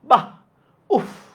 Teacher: শব্দের শেষে বিসর্গর উচ্চারণটা হবে হচ্ছে হ এর মত